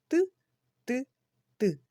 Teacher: пісеньки не виходить його не можна не потягнути ні проспівати він ніби вибухає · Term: звук т